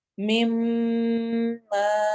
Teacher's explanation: جب بھی نون اور میم کے اوپر شد ڈبلیو کی طرح کا سائن آئے تو ہم پڑھ چکے ہیں کہ اس پر ہم غنہ کرتے ہیں تو اسی لیے ہم یہاں پر اس کو میم ما لمبا کریں گے. پہلا میم غنہ کی وجہ سے اور اگلا ما الف مدہ کی وجہ سے لمبا ہوگا